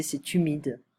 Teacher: You know that the H are not really pronounced in French, so it's like we go directly to the vowel